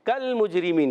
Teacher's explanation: کل مجرمین، کاف کا مخرج یاد رکھیں، کاف زبان کی جڑ اور تالو کے سخت حصے سے ادا ہوتا ہے